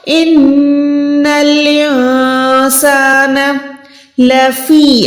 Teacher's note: الف کو ہم نون کے ساتھ ملا کے نون کو چھپا رہے ہیں۔ سان، سیٹی والا سین حرف ہے، الف کے ساتھ ہے تو ہم اس کو 1 سیکنڈ کھینچ کے پڑھیں گے، نون پہ زبر دیں گے، ایک حرکت، نون کو ہم نے نہیں کھینچنا اس نون کو، تو یہ ہو جائے گا ان الانسان لفی۔